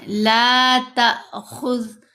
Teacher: تا کے اوپر زبر ہے، آگے حمزہ ساکن ہے تو ہم نے اس کو جھٹکا دے کر پڑھنا ہے۔